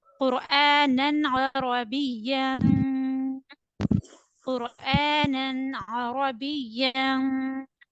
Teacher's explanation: Noon double fatha nan will read with clear sound. There is izhar.